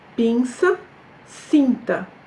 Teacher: Donc, un I suivi de N, en portugais, ça devient un I nasal.